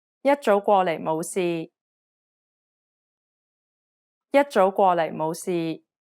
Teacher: The first syllable should be pronounced with the first tone. The second syllable is in the second tone. The third syllable is in the third tone, and so on.